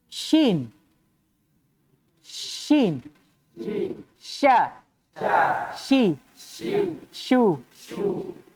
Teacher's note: dia punya satu sifat yang spesifik hanya dia yang punya namanya tafasi apa itu tafasyi tersebarnya udara pada saat penyebutan